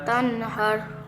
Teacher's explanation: یہاں نون ساکن کے بعد حرف حلقی میں سے ہا رہا ہے تو یہاں اظہار ہوگا یعنی غنہ نہیں کریں گے